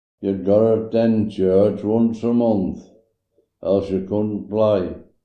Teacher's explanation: his variation of productions of strut vowels as having either very footie quality or sounding more like a southern strut variant